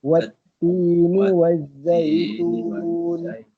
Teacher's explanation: Wat tu syiddah, suara tertahan.